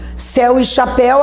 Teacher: Céu e chapéu, a força está na última. E se na última você tiver o E e o U, e o som é aberto, você acentua céu e chapéu.